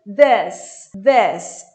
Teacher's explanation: E curto, como se fosse um E fechado.